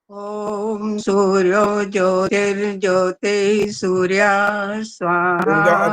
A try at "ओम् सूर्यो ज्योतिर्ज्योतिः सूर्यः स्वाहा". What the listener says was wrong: अब आपने जो सूर्यो ज्योतिर्ज्योति सूर्या बोलना है ना, ये अशुद्ध होता है। ये सूर्या, नहीं, ये वाली बात जो मैं कह रहा हूँ अब उसकी बात करो, बस आगे वाला मैंने नहीं बोला, मैंने सूर्या की बात करी है। सूर्यो ज्योतिर्ज्योति के बाद आपने जो बोला सूर्या, ये अशुद्ध है।